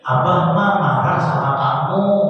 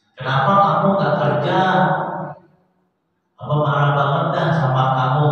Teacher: Hanya intonasinya dia nggak bisa turun, dia tinggi. Kalau orang Sunda intonasinya turun, padahal lagi marah, tapi intonasinya turun.